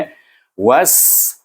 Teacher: Bunyi was, iaitu hamas dan safir, bunyi sin itu was.